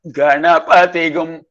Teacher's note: Pa is going up. So Pa is a Swarita. So you can see the markings in the chant when there is a horizontal line below the particular syllable.